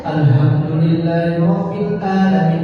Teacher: Harusnya pakai ha, harusnya pakai ain, malah pakai Hamzah, malah pakai ha.